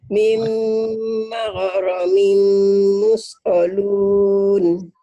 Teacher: Mimnya nggak kedengeran. Mim idgham bigunnah.